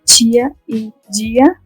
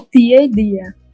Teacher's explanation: vocês falam a oclusiva sem africar. E a gente fala africada.